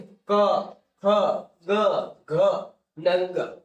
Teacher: તો કે તાળુએ જીભ અડશે એટલે કંઠવ્ય કહેવાશે